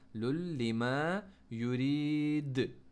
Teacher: फ़ालुल, ज़ोर से लगाना है आइन के ऊपर, लुल लिमा युरीद। दाल को हमने बाउंस किया क्योंकि इसको हमने साकिन किया। हमने कहा था बाउंस लेटर, क़ाफ़ तो बा जीम दाल को जब तक साकिन नहीं करेंगे वो बाउंस नहीं हो सकेंगे, तो इन्हें हमने हम साकिन कर दिया अपनी तरफ से।